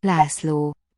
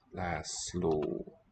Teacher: Both those vowels are long. S is SZ. László.